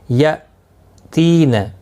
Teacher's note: عین، نون ساکن کے بعد یرملون کا یا آیا ہے، ادغام مع الغنہ ہوگا۔ یا تین، حمزہ ساکن کو جھٹکے کے ساتھ ادا کریں گے۔ تی یا مدہ ہے، 1 الف کی مقدار کے برابر کھینچ کر پڑھیں گے۔